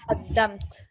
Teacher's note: So this would take a sukoon, qaddamt. So you'd slightly hear the ta sound, but just a slight hint of it.